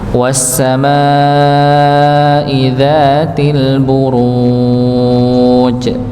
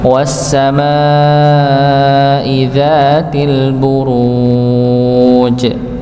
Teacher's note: Karena di akhir ayat maka disukunkan. Maka setiap huruf jim yang sukun maka akan muncul sifat qalqalahnya yaitu di dipantulkan.